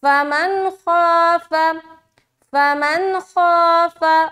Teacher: زبر خا، تو خا چونکہ موٹے حروف میں سے ہے، لہٰذا جب ہم الف مدہ کریں گے تو الف بھی موٹا پڑھیں گے اور خا بھی موٹا پڑھیں گے · ہماری نون کی آواز ظاہر ہوگی اور ہم فوراً نکل جائیں گے ، یعنی کہ یہاں پر بالکل بھی دیر نہیں لگانا۔ اس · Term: اظہار